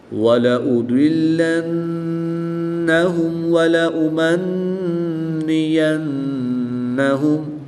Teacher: نون مشدد ہے تو یہاں پر غنہ کر کے پڑھیں گے،